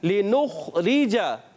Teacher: نون پر پیش ہے اور اس کو خا سے ملانا ہے اور خا میں کلکلا نہیں کرنا